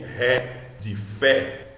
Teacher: Epsilon de Ré, de Fé, esse som aberto